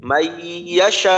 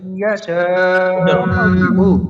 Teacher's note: ওই যে আমরা গুন্না করি, ওই গুন্নাটা কিন্তু নাকে যায়, ওই নাকের মাধ্যমে নুনের আংশিক প্রকাশ পাবে, নাকের মাধ্যমে নুনের উচ্চারণটার আংশিক প্রকাশ পাবে, কিন্তু নুন ওইভাবে নুনের উচ্চারণটা হবে না।